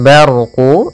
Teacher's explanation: ro yang berharakat sukun sebelumnya fathah kita namakan dengan ro tafkhim ro yang tebal